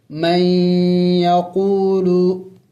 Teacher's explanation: یہاں پہ دیکھیں یا ساکن ہے، اس سے پہلے زیر آیا ہوا ہے تو اسے یا مدہ کہتے ہیں. ان حروف مدہ کو ایک الف کے مقدار لمبا کرنا ہوتا ہے، کھینچنا ہوتا ہے